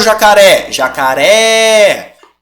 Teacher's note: a última sílaba tônica portanto é uma oxítona